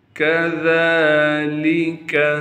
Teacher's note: ذال پر کڑا زبر ہونے کی وجہ سے ذال کو ایک الف کے مقدار کھینچیں گے